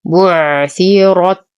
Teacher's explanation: بعثرت، نصبر على العين فهي من حروف لين عمر، نفخم الراء ونهمس التاء